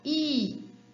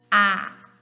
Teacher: perceba como que a língua é alta em I e é mais baixa em A